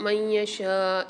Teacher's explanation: من یشاء، یہاں پر دوبارہ نون ساکن کے بعد یا مشدد آ رہی ہے تو یہاں قاعدہ ہو رہا ہے ادغام مال غنہ کا، ادغام کے ساتھ غنہ کر کے پڑھیں گے اور شین کو کھینچ کے پڑھیں گے